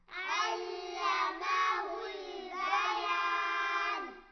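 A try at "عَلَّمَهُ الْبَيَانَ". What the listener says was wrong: علمہ البیان، لام کو ہلانا نہیں ہے۔ علمہ البیان۔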